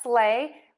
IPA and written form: sleɪ (sleigh)